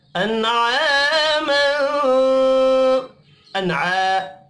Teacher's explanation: نون ساکن کے بعد حروف حلقی ہے، اظہار حلقی ہوگا، غنہ نہیں ہوگا